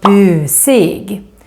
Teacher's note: Long u sound because it's just one consonant coming after.